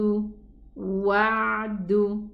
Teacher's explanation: Make sure to pronounce the ayn from the middle part of the throat.